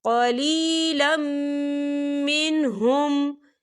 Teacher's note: فَشَرِبُوا مِنْهُ إِلَّا قَلِيلًا مِّنْهُمْ، یہ دیکھیں قلیلم، لام کے پر تنوین ہے اور تنوین کے بعد جو ہے میم آ رہا ہے، میم جو ہے حروف یرملون میں سے ہے، تو یہاں پر ادغام ہوگا اور ہم اسے غننے کے ساتھ پڑھیں گے